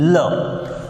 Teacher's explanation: The air stream is blocked in the middle region by the tongue, and the air stream passes by the sides of the tongue, and the sound we get is called as lateral sound, L.